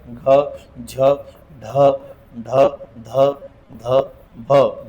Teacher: अरे बाप अडकण महाप्राण महाप्राण महा म्हणजे मोठण प्राण म्हणजे वायू ज्याचा उच्चार करताना जास्तीचा प्राण वायू बाहेर फेकला जातो त्याचं नाव महाप्राण